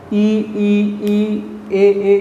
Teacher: अग्र स्वर में एक तो ई आएगी छोटी, बड़ी, एक ए आएगा और एक ई आएगा। ये जब हम बोलते हैं वर्ण तो जीभ का अगला हिस्सा प्रयोग में लाते हैं।